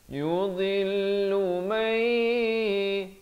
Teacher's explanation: Sekali lagi idgham bi ghunnah di sini masuk beserta dengung 2 harakat. Walakin, di sini juga idgham bi ghunnah, nun mati bertemu ya, 2 harakat masuk beserta dengung.